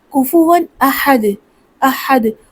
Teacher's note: کفوًا کیسے پڑھیں گے؟ کفوًا، اور یہاں پہ تنوین ہے اور اس کے بعد حمزہ آ گیا تو غنہ نہیں ہوگا